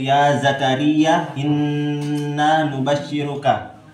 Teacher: gunnah sebab huruf nun tasydid